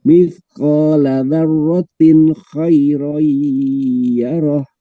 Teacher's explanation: Kha itu huruf halki, jadi itu idhar ya.